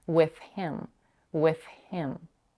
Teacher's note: the voice th with or with the voiceless th with here the next phon is the voiceless H in the word him and maybe that's why she says with with the voiceless th · Here she pronounces the word with a voiceless th.